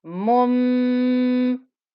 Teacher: It's making it easier to say the ghunna as a meme instead of a noon, because meme and ba are both on the lips.